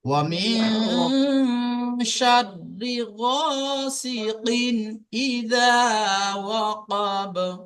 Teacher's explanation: এখানে না গুন্না করে ডাইরেক্ট তানবিনের উচ্চারণটা করে তানবিনের আওয়াজ যে নাকের মধ্যে থেকে হয় সেই আওয়াজটা জাস্ট আমরা বার করব, করে ডাইরেক্ট চলে যাব এদিকে। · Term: বিনা গুন্না